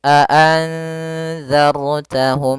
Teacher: Ra yang dibaca dengan tebal, maka bukan a'anzartahum tapi tebal, a'anzartahum dan harus ditebalkan, a'anzartahum. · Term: ra tafkhim